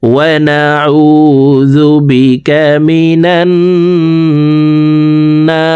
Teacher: না এখানে 3 আলিফ টেনে রকে সাকিন করে ফেলবো, কারণ জবরের বাম পাশে খালি আলিফ মদার হরফ, তো এই মদার হরফের বামের হরফে ওয়াকফ হইলে মদ্দা আরজি 3 আলিফ টেনিয়া পড়িতে হয়।